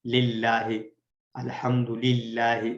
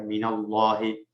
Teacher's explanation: اور مثالوں میں ہم نے جیسے اللہ تعالیٰ کے نام سے پہلے اسپیشلی پڑھا تھا للہ، الحمد للہ، اس کو ہم باریک پڑھتے ہیں کیونکہ اللہ تعالیٰ کے نام سے پہلے زیر ہے